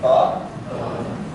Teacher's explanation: when you say ba, you're closing your lips together and then opening them up to produce those consonants.